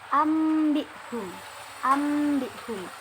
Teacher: Nun mati di sini digantikan dengan mim sukun, mim mati, sehingga dibaca ambihum.